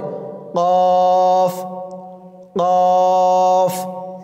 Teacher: জিহ্বার গোড়া তার বরাবর উপরের তালুর সঙ্গে লাগিয়ে উচ্চারিত হয় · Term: কফের মাখরাজ